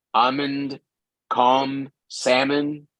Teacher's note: La L antes de M generalmente es muda. L before M normally in English is silent.